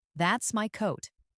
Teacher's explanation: The voice falls naturally at the end.